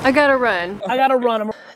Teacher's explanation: the got and two is going through a few processes first since there are two T's they'll be reduced to one next since the t is now surrounded by vowels it becomes